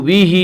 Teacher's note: بھی ہا کے نیچے کھڑی زیر ہے، کھڑی زیر قائم مقام ہے یا مدہ کے، اس لیے کھڑی زیر کو ایک الف کے برابر کھینچ کر پڑھیں گے